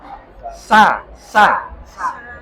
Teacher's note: Karena sempitnya rongga ya sebagai akibat menutupnya permukaan gigi seri atas dan gigi seri bawah. Coba kalau sampean ngomong sa itu kan permukaan gigi atas bawah itu nutup